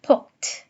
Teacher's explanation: the value of the voicing features goes from plus voice to minus voice because of assimilation to the minus voice feature of the final consonants of the stem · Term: voicing assimilation